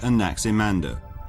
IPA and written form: æˌnæksɪˈmændər (Anaximander)